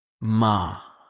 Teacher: Tone 4, sharp and falling, like giving a command. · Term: tone for